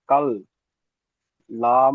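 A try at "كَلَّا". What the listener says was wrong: লা, টান দেন, মাদ্দাগুলো হরফে মাদ্দা, আলিফ মাদ্দা, ও মাদ্দা, ইয়া মাদ্দাগুলো টান দেন। কাল্লা,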